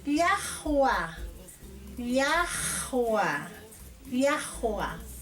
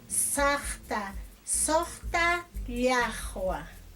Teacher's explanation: Es un sonido que al pronunciar parece que estuviéramos pronunciando con la garganta, como si fuera una doble J.